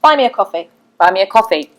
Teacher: with an imperative we tend to go down at the end